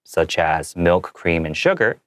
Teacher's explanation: I made my intonation a little lower so that it doesn't bring away from the sentence and confuse the listener